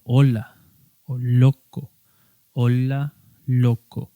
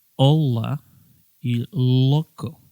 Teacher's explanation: escuchen cóm suena en palabras como Hola o loco Hola loco pueden escuchar como es muy suave mientras que la l inglesa escuchen tiene muchísimo más volumen